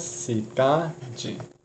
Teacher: Ela tem 3 sílabas, cidade, em que a sílaba mais forte é a do centro, é a do meio, antes da última, ou seja, a penúltima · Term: paroxícona